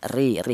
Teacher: ro yang berharakat kasrah. Ini dibaca tarkik atau tipis. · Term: ro t tarqik